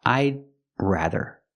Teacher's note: We say I'd, make the stop D, and then you make the R.